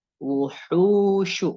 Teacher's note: Di situ ada mad tabi'i ya, mad tabi'i 2 harokat yang mana huruf hu berharokat dhammah ya, berharokat dhammah bertemu dengan huruf wau yang sukun ya, huruf wau yang sukun yang tidak memiliki harokat. Nah, maka dia dibacanya panjang mad tabi'i atau mad asli ya, ukurannya adalah sepanjang 2 harokat